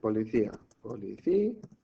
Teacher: La tónica está en la I. Policía. Por lo tanto, aquí tendríamos un hiato, porque tendríamos que separarlo en sílabas diferentes.